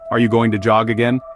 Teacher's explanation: The G sounds in going, jog, and again are pronounced with the same vibration in your vocal cords.